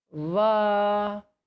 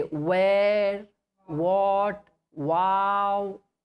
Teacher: This letter va is pronounced with the help of upper teeth and the inner part of lower lip.